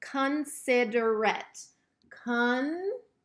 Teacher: Considerate. I know it's going to end in A-T-E, but it is not making the eight sound. It's making that schwa sound. Again, it sounds like the silent E sound, considerate.